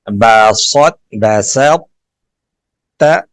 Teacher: یہاں پہ طا کی صفت استعلاء اور صفت اتباق کو باقی رکھیں گے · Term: ادغام متجانسین ناقص